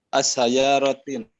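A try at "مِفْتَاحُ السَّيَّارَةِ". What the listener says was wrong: Ada alif lam jangan ditanwin. Udah hampir betul. Miftahu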